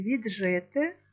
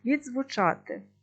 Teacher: Відзвучати префікс закінчується на д, корінь починається на з. Отже, це два окремі звуки. Африката не формується і звуки вимовляються окремо.